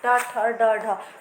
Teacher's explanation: जीभ बिल्कुल जो बोलते हैं ना, जैसे टा ठा तालू से भी पीछे जा रही है, उससे बोलते हैं मूर्धन्य